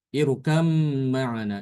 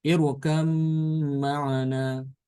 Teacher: Ini termasuk mutajanisan ya. Karena ba sama mim itu dia satu makhraj. Untuk nafas dia di sini idgham.